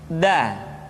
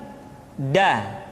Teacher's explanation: Da diucapkan dengan menyentuhkan ujung lidah kita dengan bagian gusi-gusi dua gigi seri bagian atas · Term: huruf da